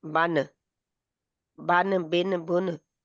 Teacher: वो जो नून है उसको हमने जाहिर करके पढ़ना है। जैसे हम बन पढ़ रही हैं तो ये बिल्कुल जाहिर है। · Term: नून साकिन